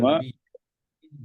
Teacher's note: এ ওয়াওটা আরো গোল করেন